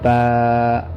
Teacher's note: با کو ایک الف کی مقدار ہی کھینچا جائے گا، اس سے زیادہ کھینچیں گے تو یہ مجہول ہو جائے گا، جو کہ مناسب نہیں ہے۔